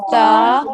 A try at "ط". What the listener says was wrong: تا کو موٹا کر کے پڑھیں، تو ہے، تا نہیں. تا ہوگا تو پھر یہ والا تا بن جائے گا، یہ تو ہے.